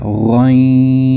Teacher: آگے ہے غین. غین کی آواز حلق کے ابتدائی حصے سے ادا ہوتی ہے